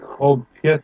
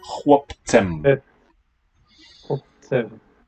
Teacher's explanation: We lose all vowel there. Yeah, the whole diphthong is just dropped. Syncopated out.